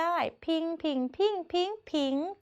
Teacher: เจอผิงที่เสียงจัตวาค่ะ